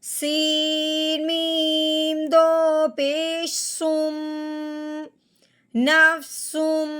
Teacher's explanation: سین کو میم مشدد کے ساتھ ملاتے ہوئے ایک الف کے برابر لمبا غنہ کرنا ہے